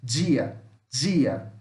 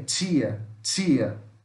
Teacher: Isso aqui não é som de D e não é som de T. É a mistura de D com J e T com X.